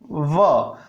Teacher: व का उच्चारण करते समय व ऊपर वाले दांत नीचे वाले होठ से स्पर्श करते हैं